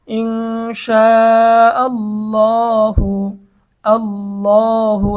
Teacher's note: তো এখানে আল্লাহ শব্দের ডানে কিন্তু জবর রয়েছে, আল্লাহ শব্দের ডানে জবর থাকার কারণে আল্লাহ শব্দের লাম মোটা